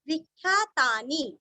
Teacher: वी के ऊपर आघात